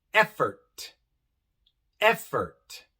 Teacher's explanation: en effort la e viene en la sílaba tónica es la sílaba que tiene más énfasis effort effort y por eso se pronuncia e effort igual en